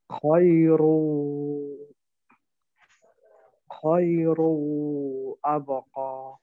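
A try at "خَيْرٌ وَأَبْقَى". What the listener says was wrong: খায়রুন ওয়ার মধ্যে তো আবার জবর আছে। ওয়া আবকা।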